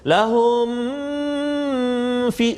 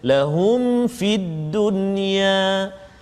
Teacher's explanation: Dan juga satu lagi pada kalimah lahum fid dunya, juga ayat 114, lahum fid dunya tu mim mati bertemu dengan fa, izhar syafawi, jadi kita tak boleh dengung kat situ